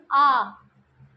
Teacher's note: आ बोलने पे पूरा मुख खुल जाता है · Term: विवृत स्वर